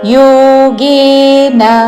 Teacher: యోగే రెండు దీర్ఘములు చివరిలో న హ్రస్వము. యోగేన అని దీర్ఘము పలకకూడదు చివరిలో.